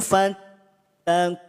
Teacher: Ku panjangkan 2 atau 4 atau 6 harokat, hukum mad arid li sukun.